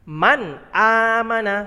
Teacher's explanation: digarisbawahi ada nun sukun Kemudian bertemu dengan Hamzah atau alis jadi dibaca jelas karena nun mati bertemu huruf alif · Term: izhar halqi